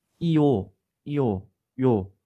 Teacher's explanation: 요의 발음 과정도 나누어서 생각해 보면 이에서 오로 온다는 걸 알 수 있습니다. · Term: 반모음 J